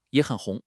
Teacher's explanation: In yě hěn, we have two third tones in a row. When that happens, the first one actually changes and becomes a rising second tone. This is a critical rule called tone sandhi, and you have to get the hang of it.